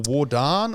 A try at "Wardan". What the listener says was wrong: it's technically Wardan. That was close. You have to roll the R to do it properly.